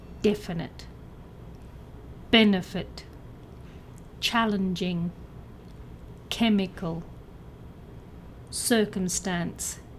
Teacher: with a stress on the first syllable